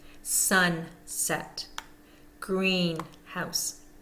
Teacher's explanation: one is going to have the primary stress the most stress and that is the first syllable